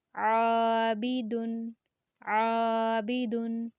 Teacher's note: عین کا ساؤنڈ گلے کے درمیانی حصے سے آئے گا، الف مد ہے، دو سیکنڈ تک لمبا کریں گے، عابدن، عابدن۔